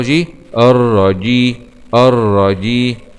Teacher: وينتبه كذلك لمخرج الجيم وسط اللسان مع الالتصاق بالحنك الأعلى